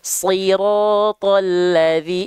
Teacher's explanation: ketika vokal i-nya keluar, tengah lidahnya diangkat ke atas